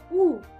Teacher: коли ми його вимовляємо губи витягнуті вперед трубочкою звук проходить вільно без перепон ніяких шумів не чутно його можна вимовити протяжно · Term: звук у